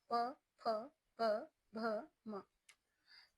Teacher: जब हम इनका उच्चारण करते हैं तो हमारे जो ओंठ है वो एक दूसरे से स्पर्श करते हैं, इसीलिए इन ध्वनियों का नाम है ओष्ठ ध्वनियां।